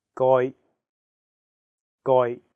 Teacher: the second character is in a high flat tone first tone